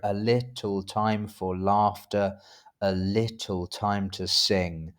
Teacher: we have those even numbered syllables being stressed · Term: iambic meter